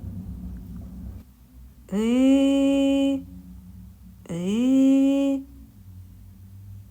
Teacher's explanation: тому що цей звук можна співати кричати голосно вимовляти і при цьому нічого не заважає ні зубки а ні губки ні язичок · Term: голосний